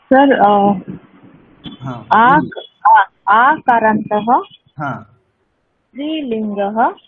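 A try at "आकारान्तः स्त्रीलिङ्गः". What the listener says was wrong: একদম ঠিক,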